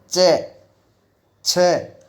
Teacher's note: जब चै, छे, जै, झै इनका उच्चारण करते हैं तो चै, छे हल्का सा संघर्ष होता है। जीवा स्पर्श जरूर करती है लेकिन पहले आरंभ में संघर्ष होता है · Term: संघर्ष स्पर्शी